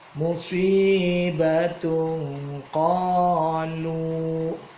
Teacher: tanwin ketemu qaf itu dibaca ikhfa. Musibatu qalu, qa-nya mad tabi'i, lu-nya itu mad, tetapi di depannya ada alif, ada hamzah.